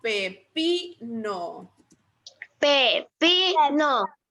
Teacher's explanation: La sílaba tónica sería pi